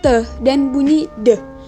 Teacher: dihasilkan karena pertemuan antara ujung lidah dengan pangkal gigi dan bunyinya meletup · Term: alveolar plosif